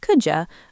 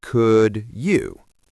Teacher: Our mouths are lazy. Moving from a D sound to a Y sound takes effort, so we blend them into a J sound. It's easier to say could ya than could you.